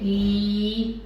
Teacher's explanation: तो जो ई साउंड है इसमें आप देख पा रहे हैं ई, जो आपके लिप हैं वो स्प्रेड रहते हैं। तो जो मेरे जॉ हैं बिल्कुल पास है, माउथ थोड़ा सा ओपन है, और ई ये साउंड रिप्रेजेंट करती है, 2 डॉट रिप्रेजेंट करते हैं कि ये साउंड लॉन्ग साउंड है, लॉन्ग वावल साउंड है।